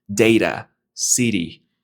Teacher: Cuando un sonido de T está en medio de dos vocales, esa T se convierte en una flap T